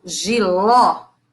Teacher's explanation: esse ó é um o aberto